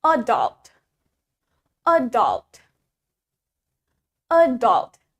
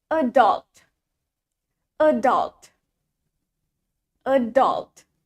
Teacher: The stress is in the first syllable.